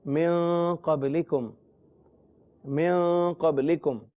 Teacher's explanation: اس کی صورت یہ ہوتی ہے کہ ہونٹ بالکل بند نہیں ہوتے، ہلکے سے کھلے ہوتے ہیں اور آواز جو ہے وہ ناک میں جاتی ہے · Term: غنہ